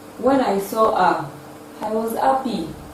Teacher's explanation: The rising tune is also used for phrases and clauses that begin sentences.